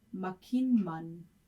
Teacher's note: The T in makit, the M in mun, T and M is an impossible cluster, so therefore it assimilates to NM.